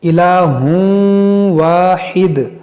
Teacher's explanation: انما اللہ الہ واحد، یہاں تنوین کے بعد واو ہے، یہاں پر ادغام کریں گے